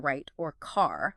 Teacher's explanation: The English R, as in right or car, this is very different from the Spanish R. English R is made with the tongue bunched up or curled back towards the roof of the mouth and near the alveolar area, but without trilling.